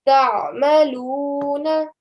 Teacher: Try and give the sound of the ayn from the middle of your throat, because that's where the sound of the ayn comes from.